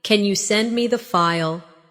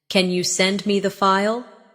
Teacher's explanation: Instead of saying flatly, "Can you send me the file?" Use a rising tone at the end.